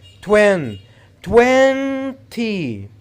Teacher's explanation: you have to put the stress on the first syllable